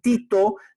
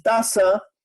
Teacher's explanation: vas a utilizar la punta de la lengua con tus dientes superiores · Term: dental